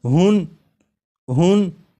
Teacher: تو جب ہا کو پڑھیں گے تو آخر میں نون ساکن کی آواز آئے گی ، جیسے ہن ہن، تو نون ساکن اور تنوین کی جو